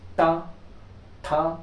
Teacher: जैसे ट ठ देखो जीवा मुड़ रही है ऊपर · जब जीवा मुड़ जाए, तो उन ध्वनियों को हम लोग समझेंगे कि ये मूर्धन्य के उच्चारण स्थान से ध्वनियों का निष्कासन हो रहा है।